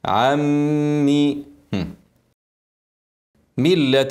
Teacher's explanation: نون ساكنه بعدها ميم ادغام كامل بقولنا هنشدد الميم وبعدين نكسرها بعد الغنه